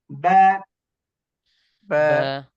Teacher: বা উচ্চারণের সময় ঠোঁটের ভিজা জায়গা থেকে উচ্চারণ হবে